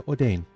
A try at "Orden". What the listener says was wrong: That is not how that word is pronounced. The Orden. There's no A. You can't turn an E-N into an A sound. That's not how that works.